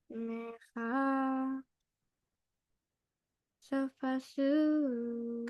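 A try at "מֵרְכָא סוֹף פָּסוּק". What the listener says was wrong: You should say those together. Mercha sof pasuk.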